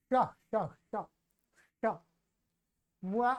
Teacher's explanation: यहां ध्यान रखना ये मूर्धन्य शकार है। ये श श श श अपने जिह्वा का जो अग्रभाग है उसको मोड़ करके मूर्धा में लगाना होता है ऊपर।